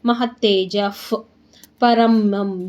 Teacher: ಬಿಡಿಸಿಕೊಳ್ಳಿ ಪರಮಯೋ ಮಹತ್ತೇಜ್ stop ಮಾಡಿ ಅರ್ಧ ಪಕರೆ ಜಾದ ಮುಂದೆ ವಿಸರ್ಗ ಇದೆ ವಿಸರ್ಗದ ಮುಂದೆ ಪ ಇದೆ ಅರ್ಧ ಫ ಆಗುತ್ತೆ